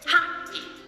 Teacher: Stress in the 2-syllable word happy is on the first syllable.